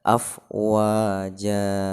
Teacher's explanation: berhenti di situ atau ketika kita waqaf disitu maka membacanya adalah jadi panjangkan dua harokat atau sering disebut dengan mad iwad mad pengganti ya Jadi maksudnya di situ adalah farhataini itu diganti dengan bacaan · fathatain itu diganti dengan bacaan mad atau panjang, disebut dengan mad iwad. Jadi dibaca 2 harokah.